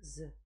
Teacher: Согласный, звонкий парный, мягкий парный.